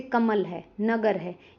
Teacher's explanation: इन शब्दों में म और ग पे ज्यादा जोर दिया जाता है। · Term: बलाघात